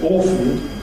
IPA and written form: ˈɔːf(ə)n (often)